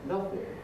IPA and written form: ˈnʌθɪŋ (nothing)